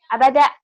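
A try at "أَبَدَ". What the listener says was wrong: Jangan buru-buru juga. Abada gitu atuh. Pendek. Abada. Penekanan. Abada.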